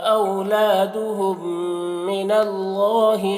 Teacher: میم کو میم سے ملا کر غنہ کے ساتھ پڑھتے ہیں، اس کو ادغام شفوی کہتے ہیں۔